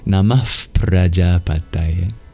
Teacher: That's called a visarga, and it's an expulsion of breath. And when you have an expulsion of breath right before you pronounce a P sound, like in Prajapataye, it becomes like an F sound. So you might hear a soft F preceding the P.